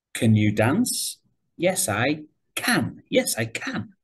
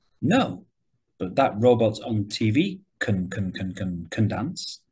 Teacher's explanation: for short answers can is often stressed